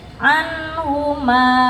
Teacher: Padahal enggak semua nun mati atau mim mati itu dipanjangkan tergantung huruf setelahnya. Kalau yang di sini anhu ketemu huruf ha hukumnya izhar dibaca jelas.